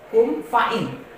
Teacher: maka mim sukunya dibaca jelas dan tidak berdengung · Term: izhar syafawi